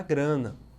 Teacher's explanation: a semelhança entre os sons está no som nasal MA de grama e também nasal NA de grana